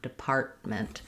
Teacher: So when we have MENT or ANCE right after a T in the middle, we tend to just use an unreleased T there. Depart, I go up to make the T, depart, and then I just release into the M, department.